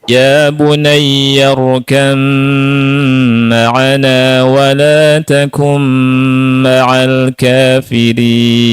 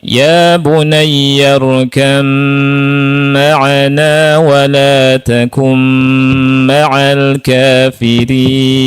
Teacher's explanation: di ba-nya tidak dibaca ba, tapi dibaca apa? Mim. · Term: idgham mutajanisain